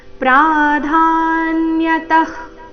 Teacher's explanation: हन्त ते कथयिष्यामि दिव्या ह्यात्मविभूतयः ಮುಂದೆ ನೋಡೋಣ ಪ್ರಾಧಾನ್ಯತಃ ಕುರು ಶ್ರೇಷ್ಠ ಪ್ರಾಧಾನ್ಯತಃ ವಿಸರ್ಗದ ಉಚ್ಚಾರಣೆ ಇಲ್ಲಿ ಅರ್ಧ ಖ ರೀತಿ ಮುಂದೆ ಕುರು ಶ್ರೇಷ್ಠ ಆಘಾತಗಳ ಮೇಲೆ ಗಮನ ರು ಮತ್ತೆ ಶ್ರೇ ಮೇಲೆ ಆಘಾತ